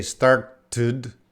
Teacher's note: So it might have a id or a ud sound, started.